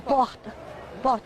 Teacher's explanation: Um pouco mais suave que a pronúncia carioca, sai da garganta também o R ouvido em Belo Horizonte e nas capitais do Norte e do Nordeste. É um R gutural.